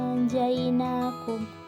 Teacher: Situ terdapat hukum nun sukun bertemu dengan huruf ja, maka dibaca samar. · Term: hukum tajwid ikhfa